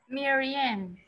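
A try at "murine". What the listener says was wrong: Solo in, no ian, in. Mirren.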